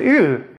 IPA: ɯ